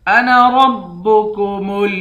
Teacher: نون کے بعد الف ہے، اس الف کو کھینچ کر نہیں پڑھیں گے، اس الف کو جلدی پڑھیں گے